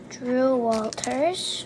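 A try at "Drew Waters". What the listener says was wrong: No, wait a minute. There's no L in there. Say it again.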